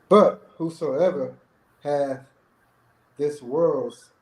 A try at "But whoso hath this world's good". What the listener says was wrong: Not whosoever, just whoso.